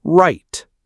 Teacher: R, curled back, right.